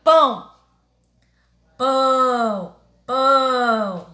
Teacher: Então, o tio, ele nasaliza a palavra. O som será emitido pelo nariz e não pela boca.